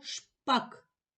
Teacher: перший звук ш який це звук приголосний твердий